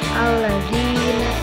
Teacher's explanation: ini dibacanya panjang karena ada harakat kasroh diikuti ya sukun, atau sebelum ya sukun ini ada harakat kasroh, disebutnya mad tabi'i.